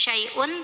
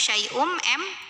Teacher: lebur ke mim ya Jadi bukan syaiun tapi syaiun m dan bunyi m nya tahan dengungkan · Maka tanwin dhammah ini masuk atau lebur ke mim ya. Jadi bukan syai'un tapi syai'um m. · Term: idgham bi gunnah